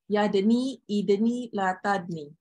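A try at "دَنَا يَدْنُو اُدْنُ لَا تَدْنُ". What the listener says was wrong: U-nya doma. dana yadnu udnu la tadnu.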